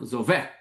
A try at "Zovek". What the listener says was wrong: the stress though is apparently on vec, which is